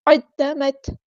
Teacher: تا ساکن میں ہمز کی صفت شو ہوگی